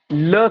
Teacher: जिन व्यंजनो के उच्चारण मे सास जीभ के दोनो पार्श्व से निकलती है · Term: पार्श्विक व्यंजन